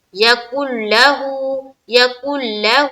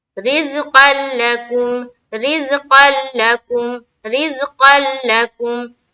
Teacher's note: نون کی جو ہے غنہ کی صفت وہ نہیں آئے گی، اس کی آواز نہیں آئے گی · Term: ادغام بلا غنہ